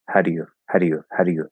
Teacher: in fast speech it'll loosen up but i'm kind of like i'm not completely saying d but i'm also not really tapping it